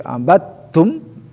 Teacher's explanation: idgham mutaqaribain ya, jadi peleburan huruf da ya, masuk ke huruf ta, karena makhraj dari kedua huruf ini adalah satu makhraj torpul lisan.